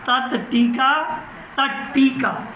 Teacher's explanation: तो तवर्ग जब टवर्ग से जुड़ा तो त भी किस में बदल गया? ट के रूप में।